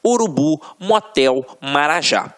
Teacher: a última sílaba é a tônica então exemplo urubu motel marajá reparem que na hora da pronúncia de forma mais aguçada você vai perceber que realmente a pronúncia da última sílaba ficará mais forte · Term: oxítonas